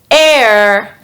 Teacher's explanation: the sound air is voiced meaning your vocal cords vibrate when producing the sound your tongue is in the upper middle part of your mouth